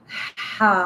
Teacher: this ha pronounced from the top part of the throat like ha, and little bit like you can feel in your throat itchy, like ha, alif zabar ha, kha wow pesh khu, kha yazir khi, ha hu, he.